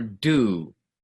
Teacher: Could be a name, could be a thing that you do in court, or do. But again, in English, the do sound is a little bit longer, and it's made up of a couple sounds, really. In Spanish, just u, do, right?